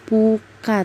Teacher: bunyi huruf P pada huruf PU diucapkan dengan kedua bibir bundarkan, bukan dilebarkan seperti pada huruf PI